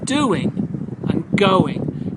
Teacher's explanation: when we're pronouncing doing and going don't forget the wha sound insertion